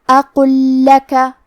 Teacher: یہاں حکم ہے ادغام. ہمیں پہلے لام کو دوسرے لام میں ملا کے ایک ہی لام اور تشدید کے ساتھ پڑھنا ہے